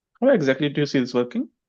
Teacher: a little less stress on exactly, because we are using it in connected speech